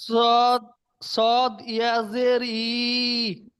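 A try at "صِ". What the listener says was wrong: এই হামজা ইয়াজের ই তো হয়, এই হামজাটা ইয়া হয়, এটা ই হয়। সদ ইয়াজের ই নয়, সদ ইয়াজের সি পড়েন।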